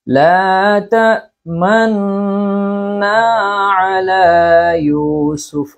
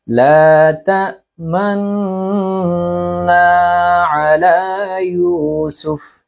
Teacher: আপনি গুন্না যতক্ষণ করবেন ততক্ষণ আপনার ঠোঁটকে ইশারা রাখবেন, অর্থাৎ ইসমাম করবেন।